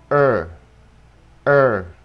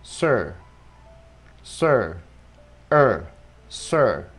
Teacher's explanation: âm ơ lùi lại, ơ, ơ, bạn thấy âm nó lùi vào trong, ơ, ha. Chẳng hạn chữ sir, sir, ơ, sir, ha.